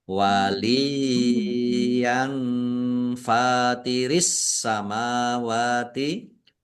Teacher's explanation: fathah tanwin bertemu dengan huruf fa, bacaan ikhfa, dibaca samar-samar.